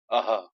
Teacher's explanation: ये विसर्ग जो है कंठ, कंठ से होते हैं, ठीक है। कंठ जो उच्चारण स्थान जो है कंठ है, ठीक है।